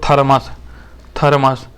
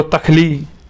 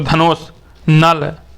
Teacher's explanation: ता वर्ग का जो उच्चारण होता है वो दांत से होता है